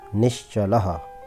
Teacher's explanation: विसर्ग के तालव्य श होने के उदाहरण, निः प्लस चलः। नि के बाद विसर्ग है, विसर्ग के बाद चा आया है तो विसर्ग का श हो गया। नि प्लस श प्लस चलः, निश्चलः।